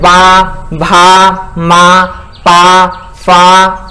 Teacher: ओष्ठ, मतलब होठ। जब हम इनका उच्चारण स्थान करते हैं तो हमारे होठ आपस में मिल जाते हैं।